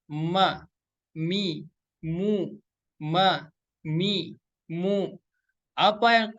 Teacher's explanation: Intibaqu syafataini bi khafifatin ma'al gunnah ya. Jadi menempelkan kedua bibir dengan lembut disertai gunah. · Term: huruf mim